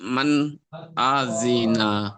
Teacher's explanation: নুন সাকিনের পরে পরে হুরফে হালাকির ছটি অক্ষরের মধ্যে হামজা এসেছে তাহলে নুন সাকিনের আওয়াজটা কি আওয়াজটা গুন্না না করে জাহির করে তাড়াতাড়ি পড়তে হয় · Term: ইজহারে হালকি